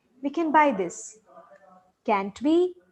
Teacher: so the tone goes up in the question tag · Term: intonation